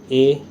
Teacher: जो आपकी जीभ है ना वो दांतों के नीचे, मतलब नीचे वाले हिस्से पर चिपकी रहती है, और जो जोर है वो कहाँ पर पड़ रहा है, कंठ पर पड़ रहा है।